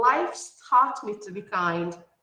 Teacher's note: Observe that we pronounce this S with a sound of S because life is unvoiced.